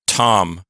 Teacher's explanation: a word and ends a word like if I say Tom that's heavily aspirated starting a word but if I say the word part then that's at the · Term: aspiration